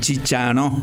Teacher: se nasaliza la última vocal y se convierte en chicha